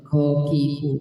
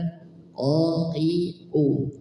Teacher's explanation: Dibaca qiu, tidak dibaca kokiku, tapi dibaca qiu, tebal. Huruf qaf di sini dibaca tebal